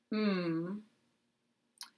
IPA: m